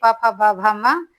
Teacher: ओट्स यानी दोनों ओठ से